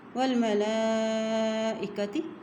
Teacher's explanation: لام کے اوپر کھڑی زبر بھی ہے اور مد بھی ہے، اس لیے اس کو لمبا ادا کریں گے